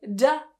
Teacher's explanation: it's buzzing it's vibrating that means it's a voiced sound